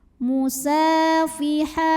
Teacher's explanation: Maka cara bacanya dipanjangkan sinnya 2 harokat. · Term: mad tabi'i muqaddar